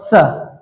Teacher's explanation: सपेरा वाला स को दांतों से बोलते हैं